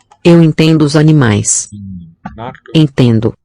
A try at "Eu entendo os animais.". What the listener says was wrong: Not a real N there in syllable 2. About the first one, entendo sounds like a real N with contact and full sealage. But entendo seems to color the vowel instead. This N, somewhat like in French.